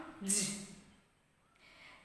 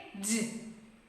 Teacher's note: It's voiced palato-alveolar. Voiced palato-alveolar.